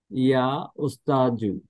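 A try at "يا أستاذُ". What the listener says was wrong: ইয়া উস্তাদু, দাল নরম করে, ইয়া উস্তাদু,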